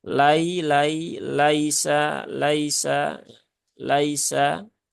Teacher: ada huruf Lin ya maka tidak perlu ditekan cukup biasa saja